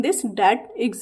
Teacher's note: dental sounds, द sound such as TH in दिस, डैट, etcetera made with the tip of the tongue extending slightly between the upper and lower anterior teeth